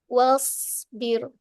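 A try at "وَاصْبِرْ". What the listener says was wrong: Okey cantik.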